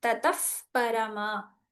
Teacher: The visarga becomes an upadhmaniya.